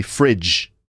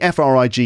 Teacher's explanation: the frig in refrigerator is pronounced with a J sound not a g sound it's a j sound which in phonemes looks like a d